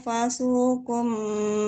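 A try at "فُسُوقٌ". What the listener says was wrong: Nah, bukan fasu tapi fu ya. Harokat fa-nya dhamma. Fusukum bikum.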